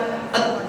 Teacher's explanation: Oh, ujung lidah ketemu dengan gusi.